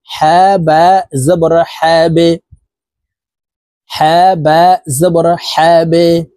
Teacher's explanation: এ বা কে নিচের দিকে ধাবিত করে ধাক্কা দিয়ে উচ্চারণ করব এই হা বা কে ধরবে এভাবে পড়বো হা বা জবর হাবে